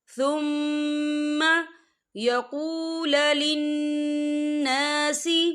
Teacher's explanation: ثم یہاں میم مشدد ہے تو یہاں پر غنّہ ہوگا